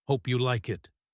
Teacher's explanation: The pitch goes up at the end inviting a positive reaction.